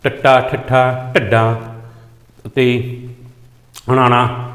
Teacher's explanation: ਉਲਟਜੀਵੀ ਵਿੰਜਨਾਂ ਦਾ ਉਚਾਰਨ ਜੀਭ ਨੂੰ ਉਲਟਾ ਕਰਕੇ ਤਾਲੂ ਨਾਲ ਸਪਰਸ ਸਥਾਪਿਤ ਕਰਕੇ ਹੁੰਦਾ ਹੈ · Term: ਉਲਟਜੀਵੀ ਵਿਅੰਜਨ